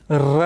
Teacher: ठीक है, र देखिएगा, इस पर टच डायरेक्ट नहीं होता, जब र का उच्चारण करेंगे तो जीभ जो है प्रकंपित होती है। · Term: प्रकंपित वर्ण